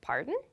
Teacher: your intonation should go up when you say this pardon